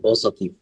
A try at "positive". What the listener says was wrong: Sound, okay? Not zative. Z. Z. Not C. Z. There should be vibration, okay? Z.